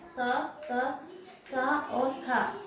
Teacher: जब हम इनका उच्चारण करते हैं तो हमारे मुख की हवा थोड़ी रगड़ खाके और गर्म होके बाहर निकलती है, जिसके कारण हम इनको उसम व्यंजन कहते हैं।